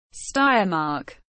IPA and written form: ˈʃtaɪ̯ɐˌmaːk (Steiermark)